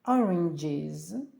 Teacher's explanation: додаємо S яке вимовляється як з після дзвінкої